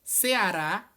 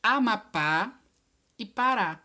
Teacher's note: a última sílaba ou seja é oxítona